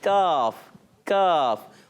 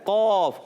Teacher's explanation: زبان کی جڑ جب سخت حصے سے لگتی ہے تو ادا ہوتا ہے کاف کاف، اور زبان کی جڑ اور تالو کا نرم حصہ لگتا ہے تو ادا ہوتا ہے قوف